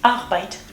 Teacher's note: it can also be realized as the uvular triller, or in German Zäpfchen R, like in Arbeit